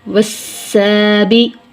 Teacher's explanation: لام تعریف کے بعد سین حروف شمسی میں سے ہے، لام کا سین میں ادغام ہوگا